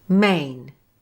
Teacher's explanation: When the word main is said quickly by a native speaker, it does become shorter, but it still maintains its familiar sound by closing the jaw at the end for the I sound. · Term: diphthong